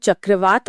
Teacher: जब हम चक्रवात बोलते हैं तो त ध्वनि दांतों से टकराकर एक कठोरता लाती है जो उस खतरनाक हवा को दर्शाती है।